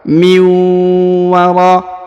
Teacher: nun sukun bertemu dengan waw, ditahan, ditekan, lalu didengungkan 2 harokat